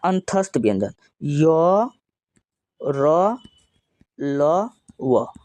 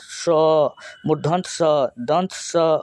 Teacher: य तुरंत बोल दिए, र तुरंत बोल दिए, लेकिन तालव स देखिए ज़्यादा टाइम लग रहा है